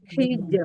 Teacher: Jim sukun dia syiddah dan qalqalah dan tipis. Hij. Nah, jadi jangan gini hijr.